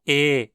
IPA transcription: eː